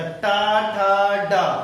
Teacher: ट वर्ग ही पूरा मूर्धा से होते हैं पूरा का पूरा ट वर्ग कहां से हो जाते हैं मूर्धा से तो ये ऑप्शन नंबर क्या होंगे बी होंगे मूर्धा ओके अगला क्वेश्चन देखिएगा question number 16 question question number 16 देखिएगा।